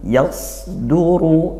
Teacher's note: Yaitu tebal, pangkal lidah dinaikkan, isti'la ya, dan idbaq sampai menutup rongga mulut